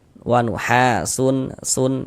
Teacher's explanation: Tanwin itu di ujungnya itu ada nun sukunnya yang tampak yang kelihatan kalau kita ucapkan. Kalau dari segi tulisan yo enggak ada huruf nun sukunnya.